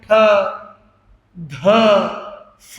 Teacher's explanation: हर पहले वाले अक्षर में ह का साउंड जुड़ता है। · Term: महाप्राण